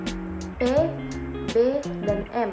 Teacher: artikulasi sendiri terbagi atas empat yaitu itu yang pertama konsonan bilabial konsonan bilabial yaitu konsonan yang terjadi pada kedua belah bibir bibir bawah merapat pada bibir atas yang termasuk konsonan bilabal ini adalah bunyi p b dan m